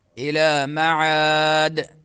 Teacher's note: الی معاد دال میں قلقلہ اور عا میں مدہ